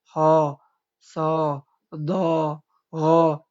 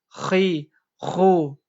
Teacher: mau harokatnya fathah atau kasroh atau dhammah, dia dibaca tebal